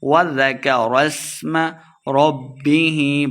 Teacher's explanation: با مشدد ہے، را کو با کے ساتھ ملا کے پڑھیں گے